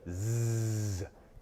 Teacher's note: But if you say z, you will feel your voice vibrate. That is a voiced sound.